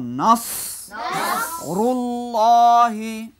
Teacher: রায়ে দাম্মা, লামে তাসদীদ ডবল পড়তে হবে।